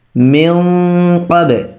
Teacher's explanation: তবে এখানের গুণনাটা ছিল পাতলা আর এখানের গুণনাটা হবে মোটা, কেননা নুন সাকিনের পরে কফ আসছে, এটা ইকফার হরফ প্লাস এটা এই হরফটা মোটা হরফ। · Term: ইখফা গুন্না